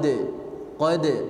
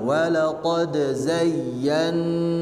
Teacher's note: walaqad di situ dalnya termasuk huruf qalqalah, maka harus dipantulkan